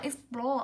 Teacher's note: Âm đấy của chúng ta cũng là O dài, trọng âm ưu tiên rơi vào nguyên âm dài, nó cũng rơi vào âm tiết thứ hai.